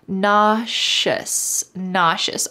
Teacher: Notice the pronunciation here. The S in the middle sounds like shh.